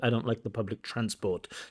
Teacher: So in that word public transport, those 2 words, public transport, the stress should be on transport, not public.